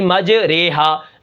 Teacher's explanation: امالہ والی را، یہ ہمیشہ باریک ہوتی ہے